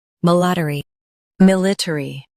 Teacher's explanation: mil ih ter ee military mil ih ter ee military Stress mil. Keep ter and ee light.